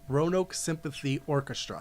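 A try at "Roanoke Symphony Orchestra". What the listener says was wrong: Symphony. You said sympathy. No, you said sympathy.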